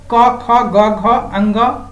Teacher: व्यंजन में सबसे पहले आता है क वर्ग, क ख ग घ अंग, यानी क वर्ग का उच्चारण स्थान क्या है, कंठ है। यानी फेफड़ों से हवा आती है और कंठ को स्पर्श करते हुए निकल जाती है,